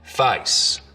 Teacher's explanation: the diphthong in face starts real low down around ah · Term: face lowering